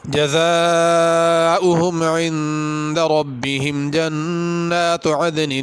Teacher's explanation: جنات کی نون پہ بھی غنہ ہے